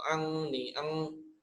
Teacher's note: dibacanya mengarah ke ang, mendengung lah ya. Istilahnya seperti yang ngirung, seperti itu, pakai hidung lah